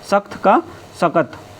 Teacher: जब महाप्राण ध्वनि अल्पप्राण में बदल जाती है तो उसको अल्पप्राणीकरण कहते हैं